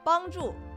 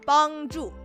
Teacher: First tone, fourth tone.